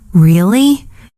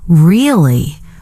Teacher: If I say, Really? with a rising tone, it means surprise or interest. But if I say, Really? with a flat tone, it can mean disbelief or even sarcasm.